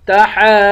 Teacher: لام کو ایک الف کی مقدار کھینچ کر پڑھیں گے، تحاضون، ہا پر کھڑا زبر بھی ہے اور مد بھی ہے، اس مد کو 5 الف کی مقدار کھینچ کر پڑھیں گے